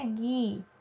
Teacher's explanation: Nesse caso aqui, o G e o U tem o E e o I junto e eu não pronuncio o U. Eu falo um só som, né? Gui, sem ouvir pronunciar o U.